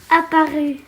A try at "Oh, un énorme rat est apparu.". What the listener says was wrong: Est apparu. Liaison. Tu vois? Liaison de la lettre muette avec le verbe derrière. Avec le participe passé derrière.